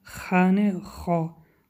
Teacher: خا حرف استعلا است، غوص خوانده می شود